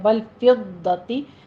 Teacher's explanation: ضاد کی آواز آپ نے زبان کی کروٹ اوپر لگائیے اور سختی کیجئے